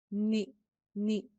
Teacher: زیر جو ہے وہ یائے مدہ کے مقابلے میں آدھی ہوتی ہے، ہاف ہوتی ہے، بالکل اسی طرح جس طرح ہم نے زبر پڑھی تھی کہ زبر الف مدہ کے مقابلے میں ہاف ہوتی ہے اور پیش واو مدہ کے مقابلے میں ہاف ہوتی ہے، اسی طرح سے زیر یائے مدہ کے مقابلے میں ہاف ہوتی ہے۔